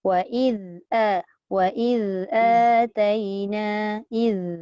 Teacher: وإذ Jaga. Zal tak boleh z. Dan dia tak boleh ada sofir. Tak boleh. Wa iz ataina iz.